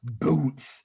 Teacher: with the boots, we're going to emphasize the B. It's going to be very explosive. This is the bass drum.